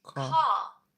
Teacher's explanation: Notice that I'm not saying the R there.